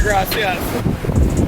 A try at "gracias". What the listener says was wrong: He ain't even saying it right. Gracias. Roll your R. Roll your R. Gracias. Gracias.